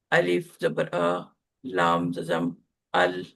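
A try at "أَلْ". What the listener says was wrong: इसको अलिफ जबर आ नहीं पढ़ते। अलिफ के ऊपर जब भी कोई हरकत आ जाती है तो वो हमजा बन जाता है। हमजा जबर लाम अल।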